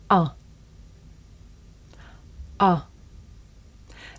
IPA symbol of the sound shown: ʌ